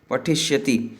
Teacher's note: आगे बोलते हैं कि विशेषता क्या बोले, सामान्यतः बोल रहे हैं कि पठिष्यति इत्यादि रूपों में व्याकरण के कुछ नियमों के कारण स्यति में स को मूर्धन्य श हो जाता है तथा मूल धातु के अंतिम अक्षर के साथ ई जुड़ा रहता है।